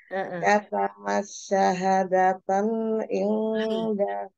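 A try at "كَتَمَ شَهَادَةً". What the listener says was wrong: Shinnya jangan ditasydid. Katama syahadatan.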